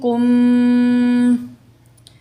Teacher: کاف کی پیش کو میم تشدید سے ملا کے پڑھیں گے اور میم میں غنہ کریں گے